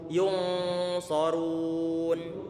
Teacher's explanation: Ini shad dia tebal karena dia termasuk huruf isti'la.